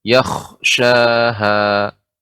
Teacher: kha-nya adalah ditebalkan bukan dipantulkan